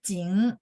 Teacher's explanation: Ya, jing, seperti itu. Jing, naik ke atas. Nada kedua.